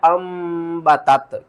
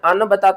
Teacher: यहाँ पर देखें तो ये देखें, ये एक कवायद मैं आपको बता दूं, नून साकिन के बाद अगला हर्फ अगर बा आ जाए तो हम नून को छोड़ देते हैं, मीम को पढ़ते हैं। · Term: इकलाब